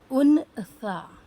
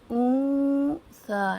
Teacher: یہاں پر لکھا ہے ان سا، لیکن جب ہم اخفا کرتے ہیں تو اون سا، ناک میں آواز کو روک کر نون ساکن کی آواز کو چھپا کر پڑھتے ہیں